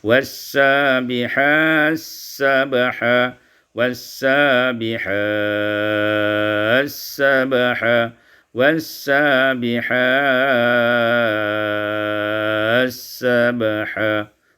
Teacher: Kemudian surah An-Nazi'at pada ayat yang ketiga, was-sabihati sabaha, idghamut ta fis sin, diidghamkan ta pada sin menjadi was-sabihas sabaha, was-sabihas sabaha, was-sabihas sabaha.